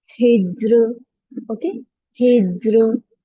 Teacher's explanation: Thin with kasra. Kasra letter is followed by a letter with a sukoon and then a ra sakina. Then this will be read thin with low sound. जब या तो रॉ के नीचे कसरा आए या फिर रॉ साकिन से पहले कसरा आए, जैसे रॉ साकिन से पहले भी साकिन लेटर है और उसके पहले कसरा आए, तब हमने रॉ को लाइटली पढ़ना है।